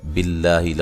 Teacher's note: لفظ اللہ کو باریک پڑھنا ہے، اس سے پہلے زیر ہے